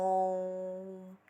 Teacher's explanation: ओ और म में जितना टाइम लगा उसे क्या कहते हैं? हम प्लूत स्वर कहते हैं